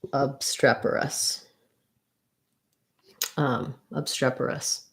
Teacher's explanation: it says that we have second syllable stress, so streperous. · we would have stress on the strep syllable, and then this would sound like a schwa, obstreper, and then we have an us, obstreperous.